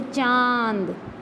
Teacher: चंद्र बिंदु यानी अनुनासिक का उच्चारण करते समय हवा जो है हमारे मुख और हमारे नाक दोनों से बाहर की तरफ निकलती है, जैसे चांद।